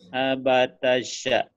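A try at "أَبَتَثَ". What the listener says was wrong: Enak aja, abatasya. Abatasa. Abatasa. Abatasa. Latihannya lidahnya di ujung aja. Sa. Abatasa. Maksudnya sin. Sya. Itu sin ya. Abatasa.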